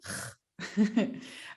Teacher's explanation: instead of doing g we try to scrape it